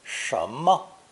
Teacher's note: this character is pronounced 十, but then loses its vowel sound in the phrase 什 么